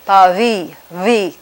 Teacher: And in fact, the authentic sound is neither a V or a B. It's not labiodental, it's bilabial, but it's a fricative, continuous sound, so it's pa-vi, V. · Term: voiced fricative action